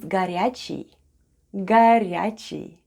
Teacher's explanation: O (which is unstressed and pronounced as /a/), then we have /r/, /ya/, then goes /ch/, /ee/ and И /ee/ Short at the end.